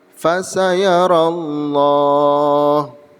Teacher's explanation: Pada lafaz ini terdapat hukum bacaan lam jalalah tafkhim. Alasannya, pada lafaz Allah didahului oleh fathah, sehingga lam pada lafzul jalalah berbunyi tebal.